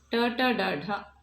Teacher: ಮೂರ್ಧನ್ಯ ಅಂದ್ರೆ ಅಂಗಳಿನ ಮೇಲ್ಭಾಗಕ್ಕೆ ಬಡಿದು ನಾಲಿಗೆ ಆವಾಗ ಹುಟ್ಟುವಂತಹ ಅಕ್ಷರಗಳು